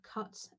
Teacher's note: for the vowel in the word cut, the rounding is quite minimal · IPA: /kɒt, kʌt/